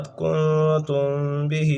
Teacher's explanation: اس کے بعد کنتم بہ، یہاں پر اخفاء شفوی ہے، میم ساکن کے بعد، وہ تھا نون ساکن یا تنوین کے بعد اخفاء کا قاعدہ، اور یہاں اخفاء شفوی اس کو کہتے ہیں کہ میم ساکن کے بعد حرف با آ جائے تو میم ساکن میں اخفاء شفوی ہوگا